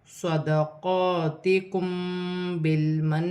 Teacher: میم ساکن کے بعد با آ رہی ہے، اخفا کا قاعدہ ہے، چھپا ہوا غنہ ہوگا